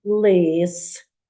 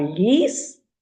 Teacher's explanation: розрізняються в звукомуму аналізі слів так першим звуком в слові лис Ось як язичок ми до верхніх зубів притискаємо так лис а ліс вже по-другому звучить м'яко